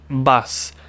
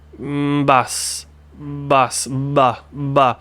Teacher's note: B is a voiced consonant, which would mean that we start with the voice box, right? B, bus, bus.